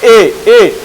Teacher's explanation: यानी कंठ और तालु के मिलने से किसका उच्चारण होता है, ए का। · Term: कंठ तालव्य